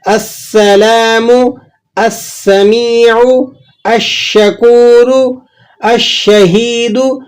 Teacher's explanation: السلام، السمیع، الشکور، الشہید، تو سین اور شین کی مثالوں میں بھی اس بات کو سمجھ لیں کہ یہ حروف شمسیہ میں سے ہیں، اگر ان پر لام تعریف داخل ہوگا تو آپ لام کو نہیں ادا کریں گے، ڈائریکٹ حمزہ کو سین یا شین سے ملا کر ادا کریں گے۔